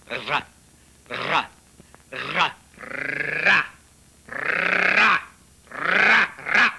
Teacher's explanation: en portant le bout de la langue jusqu'au haut du palais, de sorte qu'étant frôlé par l'air qui sort avec force, elle lui cède et revient toujours au même endroit, faisant une manière de tremblement.